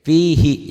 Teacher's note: Ini ada matobi'i, ada huruf mati, jadi hi-nya pendek.